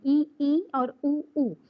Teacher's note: संवृत स्वर जिसके उच्चारण में हमारा मुख जो है वो सकरा हो जाता है। छोटा हो जाता है। खुलता नहीं है।